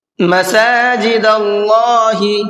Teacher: اللہ کے لام کو پر کر کے پڑھنا ہے اس لیے کہ اللہ کے لام سے پہلے زبر ہے۔